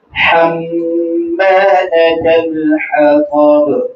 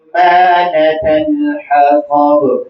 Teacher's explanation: یہاں حما میں الف بنتا ہے اور میم مشدد ہے. میم اور نون جب مشدد آئیں تو اس میں غنہ لازم ہوتا ہے.